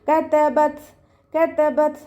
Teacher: ത സുക്കൂനാവുമ്പോൾ തയും താവും കാഫും സുക്കൂനാവുമ്പോൾ കുറച്ച് എയർ പുറത്തോട്ട് പോകണ സൗണ്ട് കൊടുത്തിട്ട് വേണം നമ്മൾ ഉച്ചരിക്കാൻ കേട്ടോ.